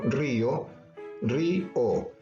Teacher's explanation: Porque la vocal termina siendo tónica, tiene una tilde, rompe el diptongo. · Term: hiato